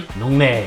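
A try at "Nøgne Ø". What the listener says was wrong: I believe it's NÖGNE. I don't think you even pronounce the O, you just blend it in with the E. NÖGNE.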